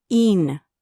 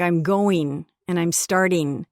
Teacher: the ing endings would be een, like I'm going and I'm starting